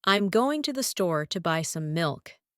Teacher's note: My voice rises and falls on the key words, giving it a more melodic quality.